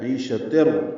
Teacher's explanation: تنوین ہے تا مربوطہ اور اس کے بعد را آنے کی وجہ سے ادغام کامل ہوا ہے